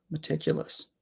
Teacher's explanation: this word is interesting because there are 3 schwa sounds in this word. Every vowel is a schwa, which means that every vowel sound here is lazy.